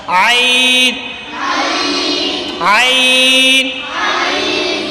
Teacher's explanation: عین حلق کے درمیان والے حصے سے ادا ہوتا ہے، جس سے ہا ادا ہوتا ہے، ہا، ہا جس مخرج سے ادا ہوتا ہے اسی سے عین بھی ادا ہوتا ہے، یعنی کہ عین اور ہا یہ دونوں حلق کے درمیان والے حصے سے ادا ہوتے ہیں۔